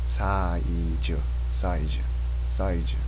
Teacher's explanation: Now in Korean there's no Z sound, so it becomes a J.